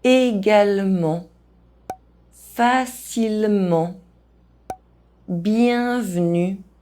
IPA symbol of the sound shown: ə